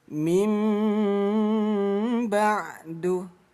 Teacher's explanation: Jangan dibaca min ba'du, tapi mim ba'du. Rapatkan kedua bibir ya. Hukum iklab dibaca samar dengung.